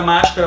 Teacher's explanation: fez a divisão silábica, viu que a mais forte é a antepenúltima, é uma proparoxítona, é acentuada.